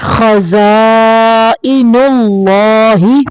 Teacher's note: اللہ کا لام موٹا پڑھیں گے